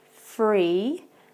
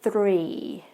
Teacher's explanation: you can tell that my tongue rolls a little bit for the number 3. And an example sentence could be, are you free next weekend?